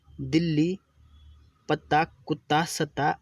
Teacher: दिल्ली में ल पहले आधा फिर पूरा प्रयोग हो रहा है, ऐसे व्यंजन द्वित्व व्यंजन कहलाते हैं।